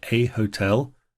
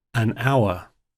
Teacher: Now here we see they both start with an H, but in hotel, the word has a sort of a harder H to it, and in hour, it's got a vowel sound to it